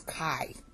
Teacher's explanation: See your voice ends at the end. It's going down.